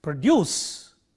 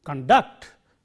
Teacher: stress on the second syllable used as a verb